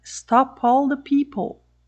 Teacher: exemplos Então olha só na seguinte frase Stop all the people este P aqui você vai ouvir por causa da palavra seguinte que é a palavra All começando com som vogal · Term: som Stop